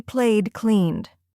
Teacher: When it ends with a voiced sound, like play or clean, it sounds like D.